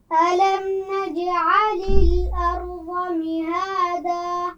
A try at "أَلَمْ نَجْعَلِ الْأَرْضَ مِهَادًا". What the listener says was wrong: ضاد کے مخرج کو ذرا واضح کیجئے. ارض.